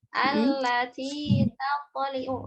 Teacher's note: Di sana ada huruf ta dan kemudian huruf to ya, maka huruf ta-nya harus dibaca tipis, kemudian to-nya dibaca tebal